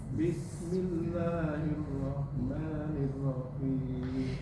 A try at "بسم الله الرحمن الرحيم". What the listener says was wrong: Bismillahirrahmanirrahim. Haknya lebih desisnya lebih panjang. Hirrahmanirrahim.